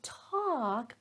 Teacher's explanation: when I say talk I'm stressing it so notice that the vowel sound was a little bit longer